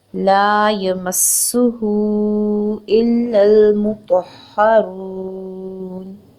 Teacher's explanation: رو پیش واو رو، رو کے اوپر پیش ہو تو اس کو پر پڑھا جاتا ہے۔ رو پیش واو رو کو 2 حرکت لمبا کرنا ہے، اور جب ہم نون پر وقف کریں گے، نون کو ساکن کر کے آیت پر سٹاپ کریں گے، تب ہم اس کو 6 حرکت تک طول دے سکتے ہیں، جو کہ ہماری تلاوت قرآن پاک میں خوبصورتی لائے گا، حسن پیدا کرے گا۔